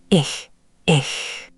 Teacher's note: That was much softer. Hear how the air kept hissing instead of stopping? That's the ich-Laut.